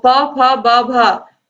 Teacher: ओष्ठ होता है, यानी कि ओंठों से होता है